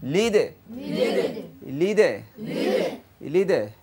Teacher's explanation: কলকলা হবে। লিদে লিদে লিদে আওয়াজটা নিচের দিকে যাবে।